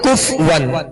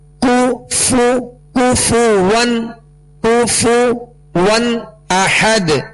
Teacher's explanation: اس کو بعض لوگ پڑھتے ہیں کف ون، تو کف ون نہیں، کاف پر پیش ہے، فا پر پیش ہے، دونوں کے پیش یہ صحیح سے ادا کریں گے، ہونٹوں کو گول بھی کریں گے اور بغیر کھینچے بغیر جھٹکا دیے معروف ادا کریں گے